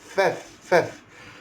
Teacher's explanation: Kemudian tuan-tuan sekalian terus lagi Faf, bukan pap atau paf. Ni gigi atas sentuh bibir bawah, syafatan.